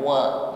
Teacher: Wa yusqawna fiha ka'san kana mizajuha zanjabila. Wa yus, mengucapkan wa sebelumnya bibir dihimpun ke depan wa ya, sehingga wa bunyinya ringan ya, tidak tebal